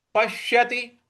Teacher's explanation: प के बाद जो आधा श है उस पर हमें आघात देना है